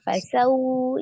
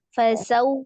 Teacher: Jadi ketika ini harfulin, ketika di wawnya itu dia panjangnya lebih dari satu tapi kurang dari dua, antara 1 dan 2, 1,5 begitu ya